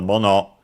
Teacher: mono accented on the second, on the last syllable